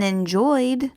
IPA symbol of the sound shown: d